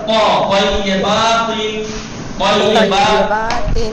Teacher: بولیے جی سب لکھیے، حرف تا تے کی طرح ادا تلفظ ہوتا ہے، اس فرق کے ساتھ کہ کس فرق کے ساتھ کہ تا کی آواز، تا کی آواز درست یعنی صاف، اور پرحجم، پرحجم یعنی بھر کے، حجم حجم بھر کے، جگہ کو بھر کے پر حجم ادا ہوتا ہے.